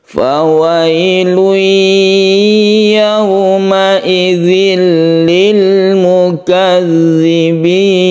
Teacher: Kemudian yauma idzil lil ada tasydid lam yang terbentuk karena tanwin bertemu dengan lam idgham bila guna, dan ini tidak dengung. Kemudian harus jelas juga karena di samping tasydid lam ada sukun lam.